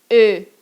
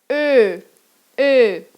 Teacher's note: Você vai fazer a boca do O, mas vai falar E. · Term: O-Umlaut